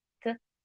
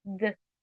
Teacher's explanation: Um deles é surdo e o outro é o sonoro. Um provoca a vibração das cordas vocais e o outro não.